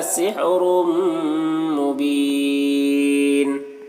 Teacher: تنوین کے بعد میم میں حروف یومن میں سے تو ادغام ناقص ہوگا. تنوین کو میم سے ملا کر غنہ کے ساتھ پڑھیں گے